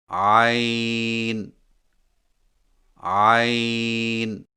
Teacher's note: زبان کی جڑ کو حلق کی طرف مضبوطی سے دباتے ہوئے باریک اور رگڑ کھاتی آواز میں پڑھیں